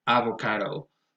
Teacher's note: The next one is avocado, and here the stress goes on the third syllable. It has a secondary stress on a, so you might hear things like avocado, but then again, the primary stress goes on the third syllable.